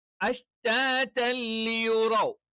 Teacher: തെൻവീനിനെ ലാമിലേക്ക് ചേർത്തിട്ട് ലാമിന് അങ്ങ് ഇരട്ടിപ്പിക്കും. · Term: ഇദ്ഗാമും ബിലാ ഗുന്ന